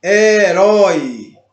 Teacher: Então, como ele fica mais forte na palavra e ele vem antes, nós percebemos que é decrescente. Começa do mais forte e termina no mais fraco. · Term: ditongo decrescente